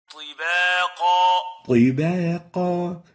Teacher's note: So you need to make sure to give the ta its velarization characteristics so as not to mix it with the ta